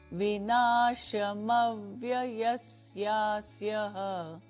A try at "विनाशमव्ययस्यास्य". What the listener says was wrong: Just yasya, no visarga. विनाशमव्ययस्यास्य न कश्चित् कर्तुमर्हति